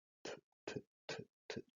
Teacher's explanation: La lengua se toca solo con el alvéolo. Y además, en inglés, la variante sorda tiene un sonido más aspirado